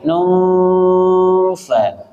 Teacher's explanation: Nungfa, dua-duanya ada, suara nun sukunnya ada, suara model fa-nya ada. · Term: ikhfa ausat